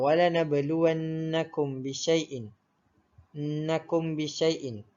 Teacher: ianya ikhfa syafawi ni berlaku apabila mim mati bertemu dengan huruf ba yang berbaris. Untuk kadar bacaan ikhfa syafawi pula, ianya dibaca dengan dengung ataupun didengungkan dengan kadar 2 harokat.